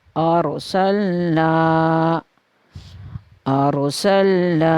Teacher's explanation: यहाँ पे हम रा को मोटा करके पूर पढ़ेंगे, क्योंकि कायदा ये है कि अगर रा से पहले ज़बर आ जाए तो फिर भी रा को पूर पढ़ा जाता है।